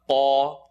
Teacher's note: Lam is light, la. Qaf is heavy behind the uvula